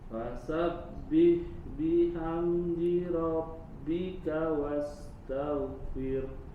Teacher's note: ro diangkat pangkal lidahnya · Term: huruf ro-nya tebal